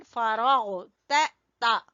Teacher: फ़इज़ा फ़रग़ता, रा को पुर पढ़ेंगे और गईन गले के ऊपर वाले, सबसे ऊपर वाले हिस्से से